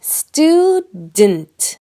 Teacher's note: most Americans don’t say “stu-DENT”, we say “stud’nt, almost like the vowel is gone. The U makes a strong vowel sound, oo, but the syllable “d’nt” has that almost invisible sound, the schwa.